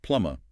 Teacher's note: >> So in standard British English, that B is absolutely silent, >> completely silent.